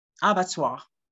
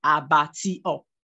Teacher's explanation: The stress is placed on the first syllable.